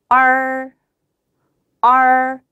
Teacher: 혀가 들려서 약간 구부러져 있기 때문에 R, R 소리가 나요.